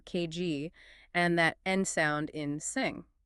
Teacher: velar sounds, where the back of the tongue touches the velum or soft palate